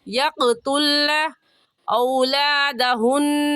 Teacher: یقتلن میں بھی قاف حروف قلقلہ میں سے ہے، قلقلہ کریں گے